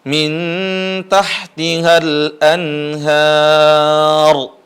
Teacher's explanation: huruf ro dibaca tebal ketika mati ketika wakaf di sini karena huruf sebelumnya adalah fathah